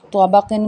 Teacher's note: قاف کو بھی موٹا پڑا جائے گا، منہ بھر کے پڑا جائے گا، زبان کی جڑ تالو کے نرم حصے سے ادا ہوگا